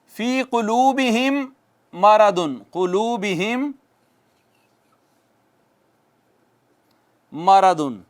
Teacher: میم ساکن کے بعد اگر میم آ جائے نا ایک اور، تو میم کا میم میں ادغام کر دیتے ہیں، ادغام میں شفوی ہو جاتا ہے۔ میم کا میم میں ادغام کر دیتے ہیں، ادغام میں شفوی ہو جاتا ہے۔